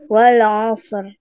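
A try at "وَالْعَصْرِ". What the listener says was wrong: Shotnya terlalu cepat.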